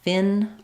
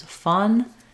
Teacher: it's about the height of the back of the tongue fin is high fun is more flat